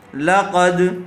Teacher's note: قاف، دال، زبر، قد، لقد، دال حروف قلقلہ میں سے ہے اس لیے جب قاف کی آواز دال کے مخرج سے ٹکرائے گی تو فوراً الگ ہو جائے گی